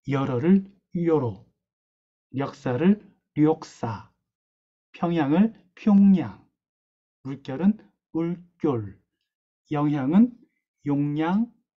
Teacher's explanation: 자, 이렇게 모음에서 어와 오를 가깝게 이 발음하는 경향이 있는 탓에 어를 바탕으로 만들어진 이중모음인 여 역시도 요에 가깝게 발음하는 경향이 나타납니다